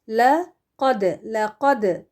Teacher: لقد میں قاف ہیوی ہوگا، دال ساکن ہے قلقلہ والا